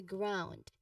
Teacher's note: There's a diphthong sound here, ow.